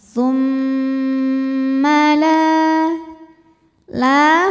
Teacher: hukumnya adalah Mad Thobi'i ziri sebab ada Alif sebelumnya berharakat fathah cara bacanya lam dipanjangkan dua harakat